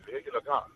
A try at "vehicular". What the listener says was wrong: Vehicular. The fact that you all pronounce the H in vehicle is wild to me. Vehicle.